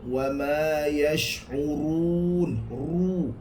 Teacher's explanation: sifat ra itu akan ditebalkan, takrir itu akan ditebalkan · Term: ra tebal